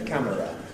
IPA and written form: ˈkæmərə (camera)